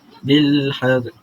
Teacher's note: Sebutannya memasukkan huruf lam sukun tadi dengan huruf sebelumnya, sebelum alif, yakni bil haz pula adalah idgham. Idgham kerana apa? Kerana memasukkan huruf lam tadi ke dalam huruf zal.